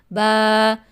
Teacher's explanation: با کا مخرج ہے دونوں ہونٹوں کے تر حصے کو آپس میں ملانے سے ادا ہوتا ہے۔